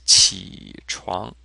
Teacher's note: third tone, second tone